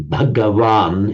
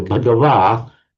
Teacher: The difference between Sanskrit and Pali in the nominative singular is simply that the N drops off in Pali.